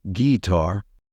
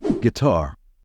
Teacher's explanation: stress should be on the second syllable so don't say gar say guitar you're the singing guitar player